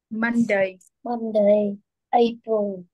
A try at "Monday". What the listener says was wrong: đó, còn đọc chính chuẩn rồi nha.